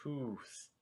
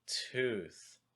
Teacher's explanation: first word tense then more relaxed